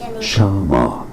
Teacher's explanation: 2 syllables. Stress on the first one.